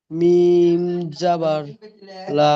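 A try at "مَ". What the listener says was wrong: আপনার অক্ষরের টান হচ্ছে না শোনা ভাই। মিমটি তিন আলিফ টান হরফ। মিম জাবার মা।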